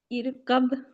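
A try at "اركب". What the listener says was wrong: ار پہ قلقلہ ہو رہا ہے ارکب کب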